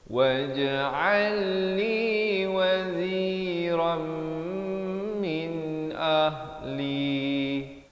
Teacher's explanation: Di sini masuk beserta dengung idgham bi gunnah. Waziran jadi waziram. Dua harakat.